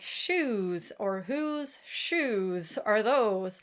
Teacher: the ooh sound in speech is quite restricted and it has a much lower placement